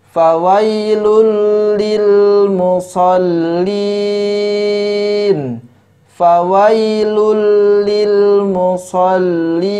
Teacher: yaitu tanwin bertemu dengan huruf lamp Hai maka hukum bacaannya adalah idghom Bila Ghunnah yaitu tidak dibaca dengan didengungkan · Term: idgham bila gunnah